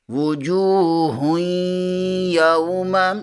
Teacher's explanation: جیم پیش کے آگے واو مدہ ہے، اسے ایک الف کے برابر کھینچ کر پڑھیں گے۔